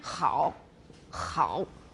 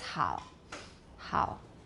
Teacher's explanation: So H is not really a fricative. We don't have friction, we have aspiration. · We do have some noise, but the noise is basically aspiration. 就 是 吹 气, that's all. · We write it with H, but that is actually a velar fricative. 因 为 它 比 较 接 近， 产 生 摩 擦.